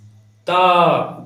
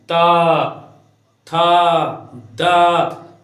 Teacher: तो ये त वर्ग के जितने भी वर्ण हैं इनका उच्चारण दांत से होता है। त, जीभ जो है दांत को स्पर्श करता है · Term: दंत्य